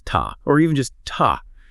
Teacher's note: But in a fast stress-timed sentence >> the lips relax completely. The ooh becomes a schwa. It becomes ta or even just ta.